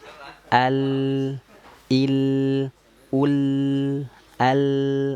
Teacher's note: Jadi makhrajnya sudah tepat, ujung lidahnya naik ke langit-langit. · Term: huruf lam